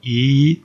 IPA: i: